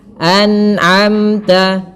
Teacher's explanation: Kemudian pada lafal amta ada mim mati bertemu ta. Izhar syafawi. Jelas muara mimnya.